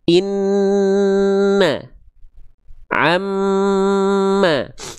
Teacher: Kenapa ditahan? Karena ada dengungnya dulu dia. Baru keluar a-nya.